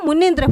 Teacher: छोटी ई plus छोटी ई जब आपस में मिलेंगे तो इसका क्या हो जाएगा दीर्घ में परिवर्तन हो जाएगा दीर्घ में परिवर्तन हो जाएगा मतलब यहां पर बड़ी ई हो